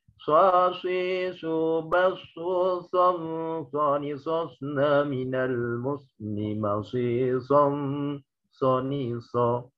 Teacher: keluar dari lidah lisan yang terletak di pertemuan antara ujung lidah dengan ujung gigi seri bawah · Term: shot